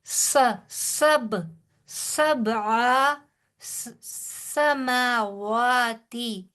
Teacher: سین میں سیٹی کی آواز ہوگی